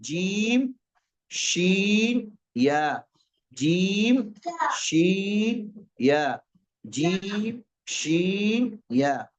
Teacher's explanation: जुबान का बीच और ऊपर का तालु। ये जब दोनों आपस में लगेंगे तो जीम शीन या अदा होते हैं।